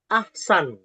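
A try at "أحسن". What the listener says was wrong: Bukan hasan, tapi ahsan.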